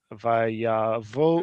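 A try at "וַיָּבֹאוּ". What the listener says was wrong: I heard here vayavo. I heard va. Yeah, it really is very natural for people who read biblical Hebrew to read it as vayavo, vayavo, right?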